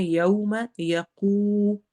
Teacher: یو میں again واو کو ادا کر رہے ہیں، لین ہو رہا ہے، ہم نے ہونٹ گول کرنے ہیں، یوم یقو، واو مدہ ہو رہی ہے، لمبا کریں گے، یقوم الحساب، ہی سا سین میں سیٹی والی آواز ہوتی ہے، الف کو لمبا کرنا ہے، آخر میں با میں ہماری آواز ہلے گی، ایکو ساؤنڈ ہوگی، اور اس کو ہم کلکلا کہتے ہیں۔